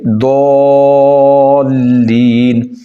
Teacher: ضاد کو لمبا کر کے پڑھیں گے